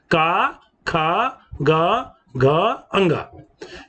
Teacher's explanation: इस कवर्ग का उच्चारण स्थान कंठ होता है